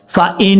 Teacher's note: اچھا، یہاں پر نون کے اوپر شد ہے، یہاں غنہ اخفاء والا نہیں ہے، یہ نون مشدد والا غنہ ہے. فَإِن اس طریقے سے پڑھنا ہے، ایک الف کی مقدار غنہ کرنا ہے.